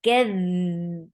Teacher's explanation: give rakhawa on dal. The sound should flow very nicely. كَذْ, and fatha is very short.